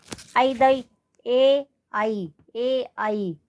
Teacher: गले की ध्वनि भी आ रही है, तालु से भी स्पर्श हो रहा है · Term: कंठ तालु